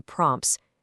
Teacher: When you have plosives packed together like the P and T in prompts, the release of the first plosive is practically inaudible. You don't over-pronounce it as prompt-tees, you just glide them together.